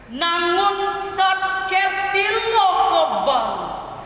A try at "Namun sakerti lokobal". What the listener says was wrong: Nah, tidak usah terlalu dihentakkan itu, malah judulnya tadi harusnya dihentak. Nah, biasa aja.